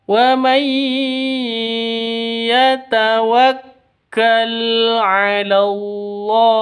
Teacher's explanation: Wa may yatawakkal, min nun mati bertemu dengan ya. Cara bacanya masuk ke ya disertai dengung dua ketukan. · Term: Idgham bi gunnah